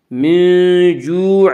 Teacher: من جوع، وا مدہ وہ جو ساکن، اس سے پہلے پیش وا مدہ کو ایک الف کے برابر کھینچ کر پڑھیں گے